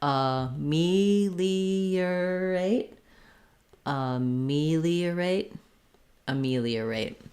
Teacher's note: we use an er here not an or because it's unstressed · uh and then put your r on your rate syllable um we do have a clear diphthong on rate it's not stressed but you still need that long diphthong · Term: unstressed er